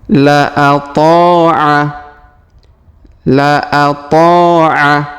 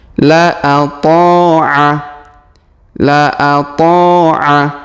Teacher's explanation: Huruf ta kita panjangkan 2 harokat karena alif di depannya.